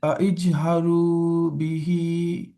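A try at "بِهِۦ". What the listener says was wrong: বিহি কেন হলো না? এখানে তো একটা ইয়া আসে, তাই না? তাহলে তো এখানে তো মানে টান দেওয়ার কথা না, কিন্তু আমরা দিলাম না, বিহ বলে থেমে গেলাম।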